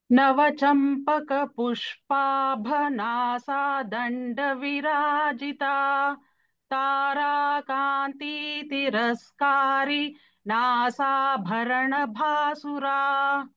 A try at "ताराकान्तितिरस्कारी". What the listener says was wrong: In second line, Tara Kanti. Kanti, Ikara here, the swara is Hrasva, that is short vowel. Tara Kanti Tiraskari. So that is how we should take. And then don't take a pause after Tiraskari. Tara Kanti Tiraskari Nasa Bharana Bhasura.